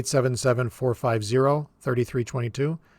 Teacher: them in sets of two when we're pausing in between so we would pause after the first three pause after the second three and then two and then two